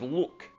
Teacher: it's even more velarized than the English L and it can be used at the beginning of the word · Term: hard L